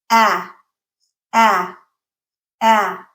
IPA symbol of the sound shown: æ